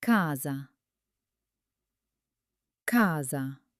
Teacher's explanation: So, so s But when is stands between two vowels, it often becomes buzzy like the s in the word rose